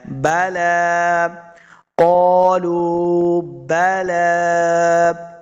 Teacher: لام پیش واو لو، واو مد ہے، اس کو 2 حرکات لمبا بھی کرنا ہے۔ قالوا بلا، لام کے اوپر کھڑی زبر ہے، اس کو 2 حرکات لمبا کر کے پڑھنا ہے۔